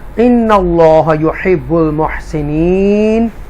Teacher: اللہ کو تفخیم کے ساتھ پڑھیں گے, بولڈ پڑھیں گے